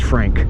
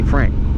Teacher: If your name is Frank, you hear how I follow through with a little air on that K on the end of Frank